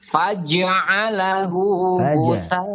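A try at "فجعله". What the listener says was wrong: Faja. Jangan faja. Jangan faja. Seperti bertasdid. Faja.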